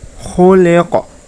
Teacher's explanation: Di akhir ayat terdapat bacaan qalqalah, ya. Maka cara membacanya dipantulkan.